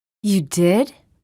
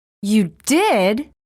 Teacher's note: wavering intonation the pitch changes within words wavering intonation is used for expressing specific emotions or attitudes